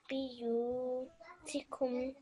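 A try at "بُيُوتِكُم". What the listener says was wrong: Buyutikum. Right, this ba here has a dhamma on top. So what sound will that make? Bu, well done. So, buyutikum.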